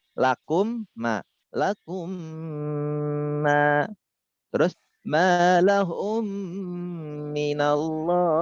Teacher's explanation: Mim sakinah didghamkan dengan gunnah yang sangat sempurna. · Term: idgham mim